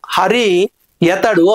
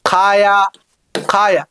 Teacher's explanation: ఇప్పుడు ఈ ఆగమంగా వచ్చినటువంటి యకారం ఏమవుతుందంటే లఘువు అవుతుంది. హరి యతడు అని అన్నప్పుడు నాలుక పోయి ఇక్కడ వర్ణోత్పత్తి స్థానములను శిథిలంగా స్పృశిస్తుంది. కాయ అంటే మామూలుగా నాలుక అశిథిలంగా స్పృశిస్తుంది. అశిథిలంగా స్పృశించినప్పుడు పుట్టేటువంటిది ఏమో అలఘువు, శిథిలంగా స్పృశించినప్పుడు పుట్టేటువంటిది ఏమో లఘువు.